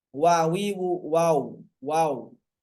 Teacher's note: keluar dari membulatkan kedua bibir tanpa menutupnya sepenuhnya. tanpa menutup sepenuhnya. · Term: huruf wau